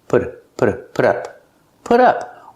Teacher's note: The T in put sounds like a fast D.